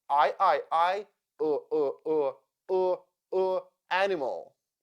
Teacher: sounds like u e e camel I as sound schw animal the second syllable is unstressed and that is why I sounds like uh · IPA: ə